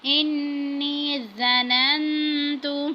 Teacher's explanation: اب نون مشدد ہے، غنہ کیا ہے۔